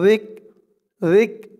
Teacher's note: জালের উচ্চারণটা একদম নরম করতে হবে জিহ্বার মাথা উপরের দাঁতের মাথার সাথে লাগবে